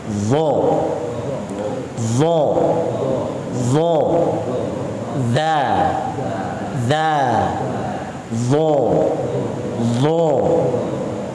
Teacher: Pangkal lidah harus ditaikan. Lidah ini harus dekat ke langit-langit mulut bagian atas. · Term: tebal